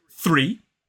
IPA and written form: θriː (Three)